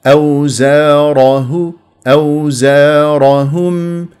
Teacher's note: الراء مفخمه لانها مفتوحه له فخمهم او زاره او زارهم هكذا بهذه الطريقه لانها مفتوحه